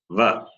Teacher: Va place of pronunciation is the teeth as well as the lips. That is, the tongue should touch just above the teeth, upper teeth. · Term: dental plus labial